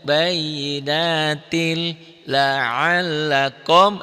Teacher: Bayyinatil masuk ke L tapi tanpa ditahan. Makanya idgham bila guna tanpa dengung.